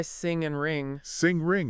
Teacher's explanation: the back of your tongue touches the soft pallet at the back of your mouth and that blocks the air from coming out of your mouth